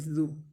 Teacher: ذال کو نرمی سے پڑھیں گے، اور ذال کے اوپر پیش ہے، اس کو لمبا نہیں کریں گے